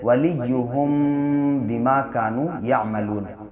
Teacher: इख्फ़ा करते हैं, यानी नाक में आवाज़ को ठहरा कर पढ़ते हैं